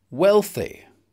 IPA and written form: ˈwel.θi (wealthy)